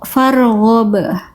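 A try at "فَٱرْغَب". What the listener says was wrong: Tebalkan ro-nya kurang ragu itu. Farghab.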